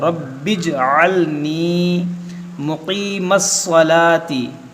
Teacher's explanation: ये क़ाफ़ मुस्तालिया इसको मोटा करेंगे, स्वाद मुस्तालिया इसको मोटा करेंगे